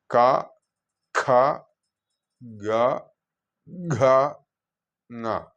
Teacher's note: ഈ കവർഗങ്ങളെല്ലാം നാവിൻ്റെ കടഭാഗം, അതായത് നമ്മുടെ നാവ് അവസാനിച്ച് തൊണ്ടയുടെ ആദ്യ ഭാഗം കൊണ്ട് ഉച്ചരിക്കേണ്ട ശബ്ദങ്ങളാണ് അല്ലെങ്കിൽ അക്ഷരങ്ങളാണ്. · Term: കണ്ഠ ശബ്ദങ്ങൾ, കണ്ഠ്യശബ്ദങ്ങൾ